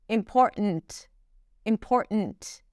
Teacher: And then she releases the T. It's not a held T when she pronounces it, it's just 't' · there isn't really a T there, it's a glottal stop. And then she releases the T.